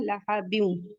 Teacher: तनवीन के बाद वाव आ रहा है, इदगाम माल गुन्ना होगा